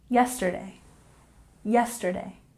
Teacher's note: yesterday, emphasis on the first syllable.